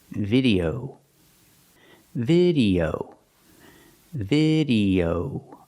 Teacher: O. Use that long O sound for the last syllable.